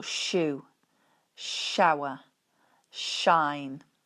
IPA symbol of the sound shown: ʃ